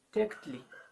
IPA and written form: 'teːʷkt͡ɬɪ (Tēqλi)